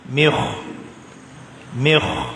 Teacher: Dia mi nipis, kha-nya tafkhim.